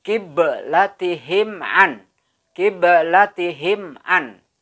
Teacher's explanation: cara memantulkan huruf ba ini atau menggetarkan mengoperkan menggoyangkan sama saja huruf ba sukun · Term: Qolqolah Sugro